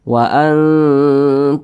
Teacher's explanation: tidak didengungkan itu tidak ditahan atau tidak dipanjangkan Jangan dibaca waantumimun nah ditahan seperti itu salah tapi dibaca jelas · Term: izhar syafawi